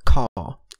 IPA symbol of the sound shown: kʰ